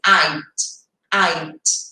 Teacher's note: A forma abreviada dele é só esse som do D, bem sutil, não é aquele D de dado